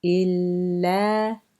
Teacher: you're holding on to the first one with the sukoon for just a tiny bit longer to get to the next same letter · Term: the double letter